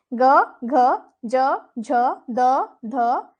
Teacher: वे ध्वनियां होती हैं जिनमें स्वर कंपन होता है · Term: घोष